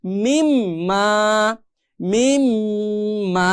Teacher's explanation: ঠিক একইভাবে মিম নুন জের মিন, মিম আলিফ জবর মা, মিন মা আমরা সাধারণত দেখতে পাচ্ছি, কিন্তু এখানে যে নুন সাকিন আসছে এই নুন সাকিনের বামে আসছে কি মিম, ইদগামে বাগুন্নার হরফ, তার মানে এখানে গুন্না সহ মিলিয়ে পড়তে হবে। মিন মা থাকবে না, এখন হয়ে যাবে মিম মা